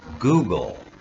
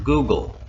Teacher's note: Google doesn't have a vowel sound between, or a vowel letter between the G and the L, but I certainly hear it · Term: schwa sound